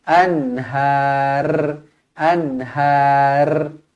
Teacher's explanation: kalau kita nak berhenti ro dibaca tebal karena sebelumnya berbaris atas